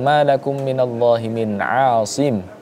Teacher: Ini nun mati bertemu dengan huruf ain, ya, salah satu huruf halki, maka harus dibaca dengan jelas.